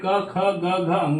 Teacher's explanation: क वर्ग में देखिए क, ख, ग, घ अंग आते हैं जिसमें कंठ से बोले जाते हैं